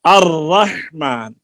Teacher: ار، ار بولیے، ار، زیادہ لمبا نہیں کرنا، ار، اور ہاں، الرحمن، دیکھیے اوپر شاد آ گئی ہے نا, شاد کی وجہ سے تھوڑا دبایا ہے نا تو تھوڑی سی زیادہ کپاہٹ ہوئی ہے